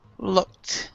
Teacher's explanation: looked has a T sound instead of ED